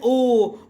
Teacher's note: इसका उच्चारण स्थान कंठ प्लस ओष्ठ है, क्योंकि ओ बोलते समय हमारे गले से भी आवाज आती है और हमारे होंठ भी हिलते हैं। ठीक है। तो इसे आप कंठोष्ठ्य भी कह सकते हैं।